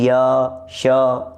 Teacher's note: य श यह तालू से बोले जा रहे हैं